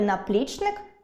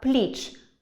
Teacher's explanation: у слові “наплічник” я сильніше скажу склад “-пліч-”, отже, він буде наголошеним